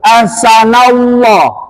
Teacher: lafaz Allah itu kalau sebelumnya berharakat fathah sama domah dibaca tebal